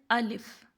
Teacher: الف کو ہم لوگ صرف ایک الف لمبا کریں گے